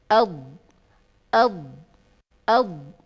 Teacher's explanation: ketika dot saya sukunkan, ada seolah-olah suara di belakang dot itu, ya, seperti suara yang mengembung begitu. Suara yang memanjang. Nah, inilah sifat yang hanya dimiliki oleh huruf dot. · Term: Sifat istitalah